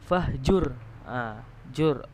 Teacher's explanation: ra-nya di sini adalah ra tafkhim, ra tebal, karena sebelum ra itu ada huruf yang berharokat dhammah